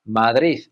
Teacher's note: some people will even put a th sound on the end, Madrid.